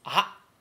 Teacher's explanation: basically it's just that the ah stops. It abruptly stops. It does not trail off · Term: little tsu